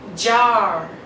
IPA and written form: dʒɑː (jar)